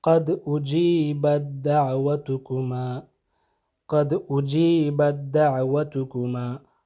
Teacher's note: تو یہ آپ نے پڑھتے وقت اس تا کو، اجیبت کی جو تا ہے اس کو پڑھنا ہی نہیں، بلکہ اس کا کوئی اثر ہی باقی نہیں رہے گا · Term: ادغام المتجانسین